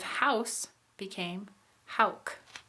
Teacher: this is when anterior sounds are produced with velars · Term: backing